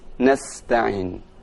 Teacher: untuk huruf Sin itu dibaca dengan tipis